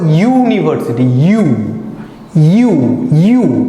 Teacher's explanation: ঠোঁটটা দেখো সামন দিকে সংকুচিত হয়ে যাচ্ছে, অর্থাৎ চোখা হয়ে যাচ্ছে সামন দিকে, অর্থাৎ ঠোঁটের হেল্প লাগছে। তুমি মুখটাকে এমন না ইউ না করে তুমি ইউনিভার্সিটি বলতে পারবে, বা তোমরা বলতে পারবে ইউনিভার্সিটি, একটু চেষ্টা করে দেখো।